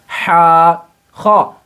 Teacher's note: ہا کا مخرج حلق کا درمیانی حصہ، یعنی جو حلق کے بیچ کا حصہ ہوتا ہے یہاں سے آپ کو ہا کو نکالنا ہے ہا۔